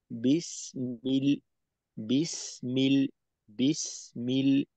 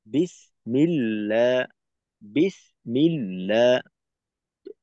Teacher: এই সিন আর মিমের মাঝে কিন্তু কোনো দূরত্ব তৈরি হইলো না, বা দুই আওয়াজের মাঝে কোনো গ্যাপ নেই। · আওয়াজ কাটবে না। যেমন ধরেন আমরা তো জানি যে সিনে হয়েছে রিখওয়া, তো রিখওয়া মানে আওয়াজ চালু রাখবো।